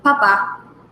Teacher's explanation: with the accent on the last vowel, which is the A